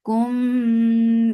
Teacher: Udu for Dhamma, circle lips, the sound is short. Kum, ikhfa shafawi, so keep the sound in your nose